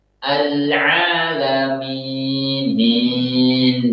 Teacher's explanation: Mencampur suara ya maddiyah ini dengan sedikit suara gunnah.